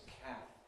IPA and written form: kæp (cap)